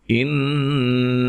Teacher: یہاں نون مشدد پہ غنہ ضروری ہے